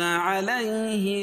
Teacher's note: علی یا ساکن سے پہلے زبر ہے تو یا لین اس کو نرم آواز کے جلدی ادا کریں گے